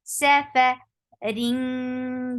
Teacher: This is light ikhfa because fa is among light letters. So you are hiding the sound of tanween and going towards makhraj of fa and keeping sound in your nose.